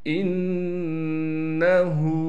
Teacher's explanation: وَأَسِرُّوا قَوْلَكُمْ أَوِ اجْهَرُوا بِهِ إِنَّهُ، حمزہ کو نون سے ملانا ہے، غنہ کے ساتھ ہا پر الٹا پیش ہونے کی وجہ سے ہا کو ایک الف کی مقدار کھینچیں گے